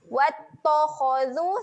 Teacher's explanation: huruf ta, huruf yang nipis. Huruf kha, huruf yang tebal. Jangan tebalkan bunyi huruf ta.